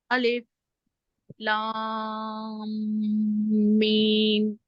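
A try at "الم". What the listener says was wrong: मीम, इसको भी लंबा खींचे ना। मीम, मीम आखिरी को छोड़ नहीं देना, हरकत लंबा करते हैं इसको, क्योंकि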